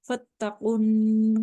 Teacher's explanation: काफ को बोल्ड पढ़ रहे हैं, मोटे रूफ में से है ये